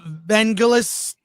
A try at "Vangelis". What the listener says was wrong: It's not gel, it's gal. It's a hard G.